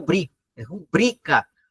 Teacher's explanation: A palavra, a sílaba tônica é o bri